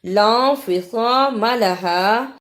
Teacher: صاد کی جگہ پہ سین کی آواز نہیں آنی چاہیے اور میم کو لمبا بھی نہیں کرنا، لا انفصام لہا۔